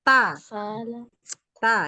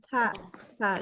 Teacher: Coba biasakan huruf ta-nya lebih kuat sifat syiddahnya ya, jangan terlalu hams.